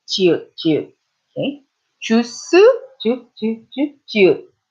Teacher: it's not quite like the American J, but it's a little more airy than the American J.